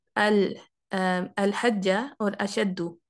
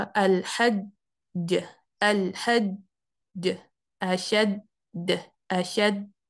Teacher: ये एक ही वर्ड है, अल हज्जा एक ही वर्ड है, तो जीम भी इसमें मुशद्दद है। हालांकि इसमें दो जीम पाए जाते हैं, पहले वाला सुकून के साथ, दूसरे वाला फतहा के साथ, लेकिन चूंकि ये मुशद्दद है तो ये दोनों मिले हुए हैं। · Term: मुशद्दद कलकला